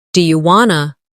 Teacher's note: In casual speech, do you want to often sounds like do you wanna